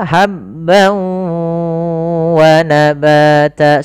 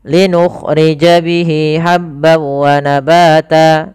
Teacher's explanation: linukhrija bihi habb ha kecil hati-hati jangan sampai dibaca habbau tapi habba wa tanwin bertemu wau sebagaimana yang tadi yaitu idgham bighunah langkah pertama masukkan tanwinnya ke wau hilang suara nunnya menjadi suara wau kemudian ditahan gunanya maka habb wa nabata sepanjang dua harakat lebih sedikit kesalahan yang banyak terjadi Jadi adalah dia ee tidak menahan gunahnya.